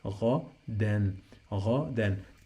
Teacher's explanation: When you find this combination, any word in Arabic that has in the end two fathas and the alif, we pronounce noon. We add noon, sound of noon to the end of the word. So that's why we say غَدًا, غَدًا.